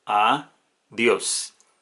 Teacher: el acento recae en la última sílaba de la palabra. Por lo tanto, es una palabra aguda.